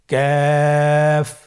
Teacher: কাফের মাখরাজ হলো জিহ্বার গোড়া থেকে একটু আগে বাড়িয়ে তার বরাবর উপরে তালির সঙ্গে লাগিয়ে উচ্চারিত